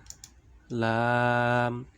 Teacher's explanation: জিহ্বার আগার কিনারা সামনের উপরের দাঁতের মাড়ির সঙ্গে লাগাইয়া লাম।